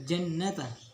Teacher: didengungkan secara nyata-nyata ke Pangkal hidung selama 2-3 harkat · Cara membaca gunnah musyayyadah adalah dengan menghentakkan suara mim atau yang bertasydid, lalu dibaca sengau atau didengungkan secara nyata ke pangkal hidung selama 2-3 harkat atau ketukan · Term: ghunnah musyaddadah